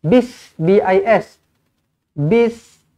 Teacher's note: hamzah wasal dan lam tiada dalam bacaan lah. Dia sekadar ada pada tulisan sahaja. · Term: alif lam syamsiyah